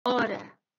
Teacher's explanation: a letra o pode pronunciar-se mais fechada